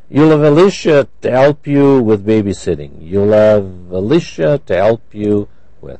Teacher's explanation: those h's have disappeared we call that reduced